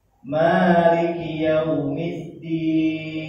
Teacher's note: maknya 2 harokat, ki-nya pendek, 1 huruf, 1 harokat.